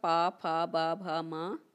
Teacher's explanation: इनका उच्चारण स्थान होगा ओष्ठ।